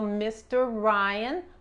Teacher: estas dos R's son como una sola R, se pronuncian como una sola R, y la lengua, recuerden, practican, la lengua no toca nada a pronunciar Mr.